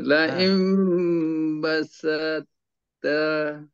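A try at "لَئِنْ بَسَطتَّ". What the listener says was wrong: Saya tak nampak tebal tu. Basauta, basauta.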